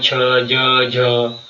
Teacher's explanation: इनकी ध्वनि जो तालु से निकलती है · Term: तालव